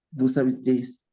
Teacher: el vous termina en S y ahora la voy a tener que pronunciar